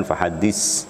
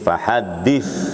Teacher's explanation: bukan fahadis, ya, enggak ada as, tapi fahadith